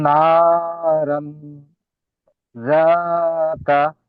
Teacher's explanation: তানবিনের আওয়াজকে নাকে তুলে এক আলিফ পরিমাণ গুণনা করে পড়তে হবে